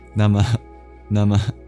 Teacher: Then there's the H with a dot under it at the end. That's the visarga, the expulsion of breath. It's like a mini exhale.